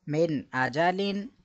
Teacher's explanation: نون ساکن کے بعد حرف حلقی ہے تو اظہار ہوگا، غنہ نہیں کریں گے